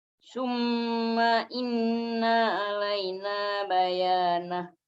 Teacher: Yang double apa yang panjang dengungnya, bukan ma-nya. Ma-nya pendek. Harokannya pendek, yang panjang hanya dengungnya